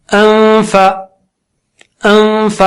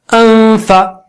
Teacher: اب کہہ رہا ہوں میں, اس کے بعد فا بولنے کی تیاری کر رہا ہوں, ہونٹ کو دانت پہ لگاتے ہوئے, اور اس دوران ناک سے غنہ کر رہا ہوں